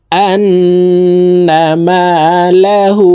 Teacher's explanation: নাকের বাসি থেকে 3 সেকেন্ড পরিমাণ গুন্নাহ করে ধরে রেখে উচ্চারণ করব। আন্না মালাহু, হু এখানে 3 আলিফ টান হবে।